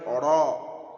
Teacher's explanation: তাহলে রয়ের মাখরাজ হচ্ছে জিভের আগার উল্টো পিঠ এবং তার বরাবর উপরে তালুর সঙ্গে লাগিয়ে উচ্চারিত হয় অর। অর সবসময় পুর হবে অর।